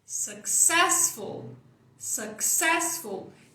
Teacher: Ses é a sílaba tônica.